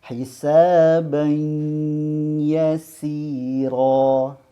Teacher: Jadi tidak sempurna semuanya di mulut, tetapi harus ada suara di hidung. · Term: dengung